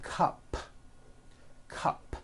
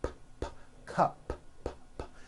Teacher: take the word cup cup it ends with an unvoiced P